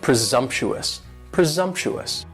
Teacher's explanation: And the S almost sounds a little more like a Z